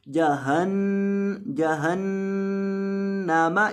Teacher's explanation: یہاں گناہ کریں گے نون کے اوپر ایک الف کے برابر. اس کی آواز کو ناک میں لے جا کر پڑھیں گے